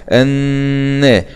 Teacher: نون شدة فتحة مع الغنة